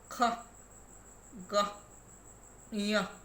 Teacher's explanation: The back part of the tongue articulates against the soft palate or velum. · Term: Velar